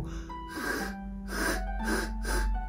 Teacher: 舌をね盛り上げて、この口蓋との間の隙間を思いっきり狭めてあげると、フッフッフッフッっていう音が出るんですね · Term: 子音